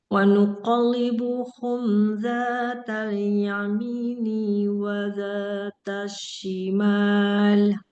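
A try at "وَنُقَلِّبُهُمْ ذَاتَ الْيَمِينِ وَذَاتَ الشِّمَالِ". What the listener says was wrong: Nah, bagus.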